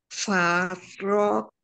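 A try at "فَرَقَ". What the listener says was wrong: Ya, ko-nya lebih bagus.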